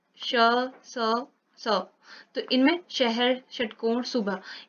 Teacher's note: इनमें ये सघोष नहीं होते, ये अघोष होते हैं, पर दोनों महाप्राण हैं, मतलब हवा का प्रवाह ज्यादा हो रहा है।